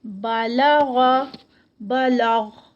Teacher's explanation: با لائٹ، لام لائٹ غین، غین بھی جو ہے وہ ہیوی لیٹر ہے